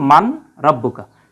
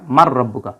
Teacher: নুন সাকিনের পরে এই যে র থাকার কারণে আমরা জানি যে এটা ইদগাম হয়ে যায়